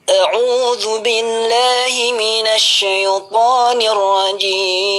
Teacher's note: Kebanyakan langsung datar, bahkan taudnya itu langsung datar.